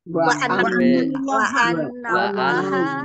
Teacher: Allahnya dibaca tebal karena harokat di depannya fathah